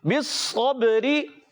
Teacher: بالصبری، با حرف قلقلہ میں سے قلقلہ ادا کریں گے، را کے نیچے زیر آنے کی وجہ سے یہ را باریک ہو جائے گی